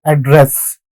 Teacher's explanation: the stress would be in the second syllable